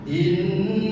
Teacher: Nun bertasdid, hukumnya gunnah. Cara membacanya ditahan. Jadi jangan langsung inna, jangan seperti itu.